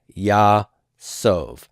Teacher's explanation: my imperfect prefix is going to be open, and that's the case, and the vowel is going to be long. That's a long A.